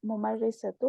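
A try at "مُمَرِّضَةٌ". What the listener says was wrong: मुमर्रिदतुन, okay, तनवीन को नहीं भूलिए।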